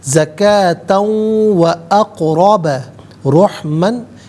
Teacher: اقربہ میں قاف ساکن ہے لیکن حرف قلقلہ ہے، آواز لوٹتی ہوئی محسوس ہونی چاہیے. اقرب را پر زبر ہے، را کو پر کر کے پڑھا جائے گا